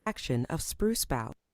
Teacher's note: Let's listen to a bit more >> action of spruce bow >> of like a little pause right before of. Each time there's a word that begins with a vowel, there's a tiny hesitation. That's called a glottal stop.